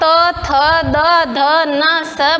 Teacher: जब आप त, थ, द, ध, न, स बोलते हो तो ये हमारी जीभ दांतों को टच करती है। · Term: दंत्य